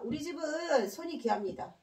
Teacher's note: 자손이 귀한 집안 할 때 손만 길게 발음합니다